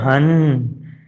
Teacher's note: نون پہ تشدید ہے، غنہ ادا کیا جائے گا، ناک سے بعد نکالیں گے، گلے کے برابر کھینچیں گے.